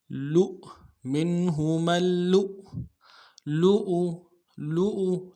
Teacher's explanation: واو کے اوپر جو حمزہ ہے اس کو حمزہ بشکل واو کہا جاتا ہے، اس کو جھٹکا دیں گے